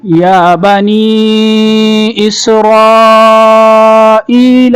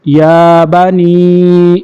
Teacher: یا کے اوپر کھڑا زبر ہے تو اس کو کھینچیں گے، ایک الف